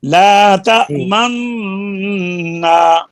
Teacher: होंठों को गोल करके ना इशबाम की बू देनी है, ला तमन्ना, बोलिए, ला तमन्ना।